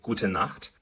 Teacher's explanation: we say gute Nacht, gute with a schwa at the end